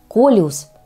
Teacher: Произносится с ударением на первый слог.